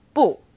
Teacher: when used on its own bu is fourth tone